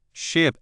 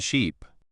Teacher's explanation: In ship, it's a short I sound. In sheep, it's a longer E sound.